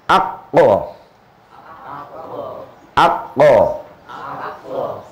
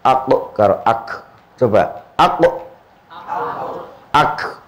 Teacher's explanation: Jadi kalau qaf agak dalam dikit teratas, kalau kaf ya, kaf itu rodok maju sedikit dari qaf.